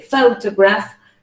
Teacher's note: the word photograph has 3 syllables. The stress is at the beginning, so you say photograph.